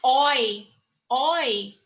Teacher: Ele é um ditongo aberto, não é?